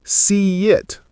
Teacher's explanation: See it becomes see it with a tiny y sound.